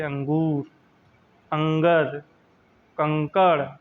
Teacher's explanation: अनुस्वार, अनुस्वार में केवल एक बिंदु लगाई जाती है, एक बिंदु लगाई जाती है। यह स्वर के बाद आने वाला व्यंजन है जिसकी ध्वनि नाक से निकलती है, जैसे अंगूर, अंगर, कंकड़।